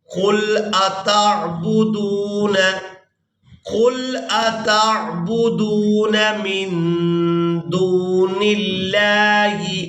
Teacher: نون ساکن پر اخفا کریں گے، اس نون کی آواز کو ناک میں چھپا کر ادا کریں گے۔ اس کے بعد نون کو لفظ اللہ کے لام کے ساتھ ملائیں گے۔